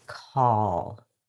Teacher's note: the dark L is in the back and it's a heavier sound. Your tongue tip may not touch the top.